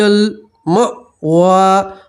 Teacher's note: فَإِنَّ الْجَنَّةَ هِيَ الْمَأْوَىٰ، حمزہ پڑھیں گے، ٹھیک ہے، پڑھیں گے، ما نہیں پڑھنا ہے، مأویٰ، اور وقف کریں گے تو وا ہی پڑھیں گے، واو کے اوپر کھڑا زبر ہی پڑھیں گے، یا تو پڑھی جائیں گی نہیں